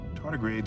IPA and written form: ˈtɑːrdɪˌɡreɪdz (Tardigrades)